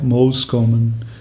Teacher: मोस्ट कॉमन, दो अलग अलग वर्ड्स हैं, इसका बन गया मोस्ट कॉमन। तो ट जो है वो उसका एलिसन हो गया, वो गायब हो गया। तो दो साउंड्स हैं जिसका एलिसन ज़्यादातर हमें देखने को मिलता है, ट साउंड और ड साउंड।